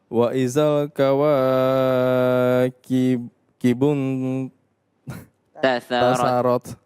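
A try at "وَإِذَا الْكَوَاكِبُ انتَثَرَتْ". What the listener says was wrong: Ya, diulang. Kawa itu cuma 2 harokat. Wa idzal kawakibun tatharat.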